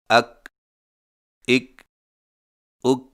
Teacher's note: کاف باریک آواز ادائیگی کے وقت زبان کی جڑ کو کوے کے قریب تالو پر لگائیں